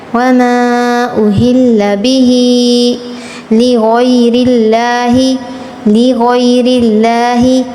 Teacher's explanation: وما کو 6 الف کے برابر کھینچنا ہے